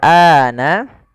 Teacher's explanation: A-nya dipanjangkan dua harakat. Adanya alif setelah huruf hamzah ini menandakan bahwasanya ia dibaca dengan mad badal.